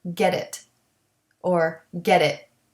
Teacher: The T at the end of get, though, is not stopped because we connect it to the it, and it will have a soft D sound when we do this.